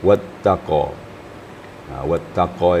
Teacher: Wattaqa itu kadang-kadang ada imbasnya kepada ta, huruf ta. Qa sifatnya tebal. Sedangkan ta sifatnya istifal, tipis. Sedangkan dia berdekatan.